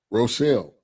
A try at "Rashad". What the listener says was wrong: It ain't no L's. It's Rashad.